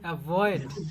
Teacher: ভিটা আছে না, ভি হবে এভাবে, এভাবে কম্পন হবে ঠোঁটে, উপরের দাঁত নিচের ঠোঁটে লাগবে কিন্তু কম্পন হবে